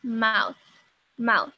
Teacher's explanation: O TH tem som de F quando ele é desvozeado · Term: TH desvozeado